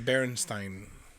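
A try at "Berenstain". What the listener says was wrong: Yes, that's not Stein. That's Stain.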